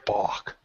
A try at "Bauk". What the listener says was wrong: That's kind of close. Not so much of an ooh, but you know.